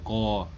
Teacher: जो क का वर्ण उच्चारण होता है, क होता है ना, उसका कंठ से होता है